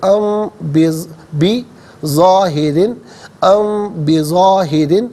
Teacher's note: را کے نیچے دو زیر کی تنوین ہے، اسے باریک کر کے پڑھا جائے گا، اور دو زیر کی تنوین کو من کی میم کے ساتھ ملائیں گے، میم کی آواز کو غنّے کے ساتھ ادا کریں گے۔ · فی الارض، ام پر غنہ اس لیے کیا کہ میم ساکن کے بعد بظاہرن میں بی یعنی با آ رہا ہے، تو میم ساکن کے بعد جب با ہے تو میم ساکن کو غننے کے ساتھ پڑھتے